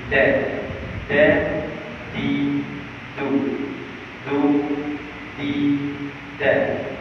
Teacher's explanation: bila kita sebut huruf dal pastikan hujung lidah itu diletakkan pada pangkal gigi kacing atas